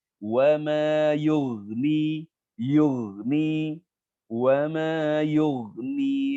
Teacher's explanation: ghain sukun jangan menerima pantulan suara ya